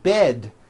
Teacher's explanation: bed has a voiced d ending it's not bet with an unvoiced T it's bed with a